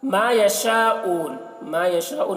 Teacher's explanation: یشا تو اس کو زیادہ کھینچیں گے۔ اون کو بھی ہم زیادہ کھینچ رہے ہیں کیونکہ یہاں پر سکون ہونے کی وجہ سے یہ واو مدہ جو ہے مد عارض وقفی ہو جا رہا ہے، اس لیے اس کو زیادہ کھینچ رہے ہیں۔